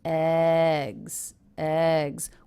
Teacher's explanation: Eggs, eggs, with just a little curve up and then down in the voice.